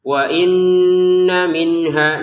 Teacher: Nun sukun bertemu ha lagi kan. Maka dibaca dengan jelas. Hanya dua harakatnya dua harakat.